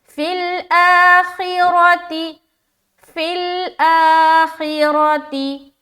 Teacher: را زبر را کو موٹا رکھیں گے، تا زیر تی، خوا کو بھی موٹا، فی الآخرتی فی الآخرتی۔